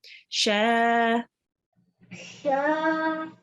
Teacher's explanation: the sheen, the sha here, you prolonged it, but try to prolong it for a tiny bit longer